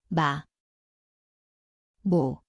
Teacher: 미음, Ia berbunyi seperti M. Tempatnya adalah kedua-dua bibir, nasal